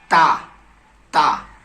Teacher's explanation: سیرہ زبان اوپر کے سامنے والے دانتوں کے جڑ سے تا ادا ہوتا ہے۔ جیسے سیرہ زبان کا اگلا حصہ یہ سیرہ ہے، سب سے اگلا حصہ، اور اوپر والے دانتوں کا جڑ، جہاں آخری جڑ ہے، وہاں پہ ہم زبان کا سیرہ لگائیں گے اور وہاں سے تا نکالیں گے۔